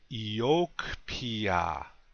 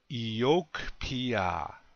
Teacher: accent on the second syllable repeat after me please yoke Pia one more time yoke Pia